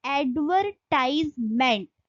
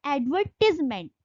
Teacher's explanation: American यदि language में इसको पढ़ा जाएगा तो इसको बोला जाता है एडवर्टाइजमेंट, और जब इसको हम ब्रिटिश इंग्लिश में पढ़ेंगे तो उसको बोला जाएगा एडवर्टिजमेंट। तो वहां पे टाइज नहीं लगा, वहां पे एडवर्टिजमेंट पढ़ा जाता है।